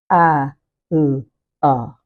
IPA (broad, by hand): aʊə